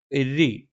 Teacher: നാവിന്റെ തലയുടെ മുതുക് മേലെ മുൻപല്ലിന്റെ മോണയിലാണ് രി എന്ന് പറയുമ്പോൾ തർക്കത്തീക് ആണ് നാവിന്റെ മധ്യഭാഗം താഴെന്ന് നിൽക്കും അല്പം ശബ്ദം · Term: തർക്കീക്കാണ്